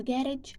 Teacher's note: In UK, United Kingdom, you will probably stress the first syllable of garage, while in US you will stress on the second word, like adult, buffet follow the same pattern.